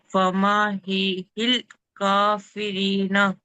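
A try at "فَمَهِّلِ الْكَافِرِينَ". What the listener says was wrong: ఆ, లాం సుకున్ నాకు వినబడట్లేదు. మరి మీరు త్వరగా చదివిస్తున్నారో ఏమో. మరి క్లియర్గా స్పష్టంగా లాం సుకున్ రావాలి. ఫమహిలిల్ కాఫిరీన.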